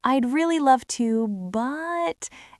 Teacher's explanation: That vocal stretch adds the emotion. And then you add the word but, and you leave it hanging in the air for just a microsecond. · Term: tiny pause